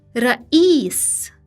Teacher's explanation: Ya is the long vowel e, like the e in English sheep.